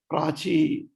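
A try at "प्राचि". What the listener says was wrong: Prachi, not dirgha. Prachi.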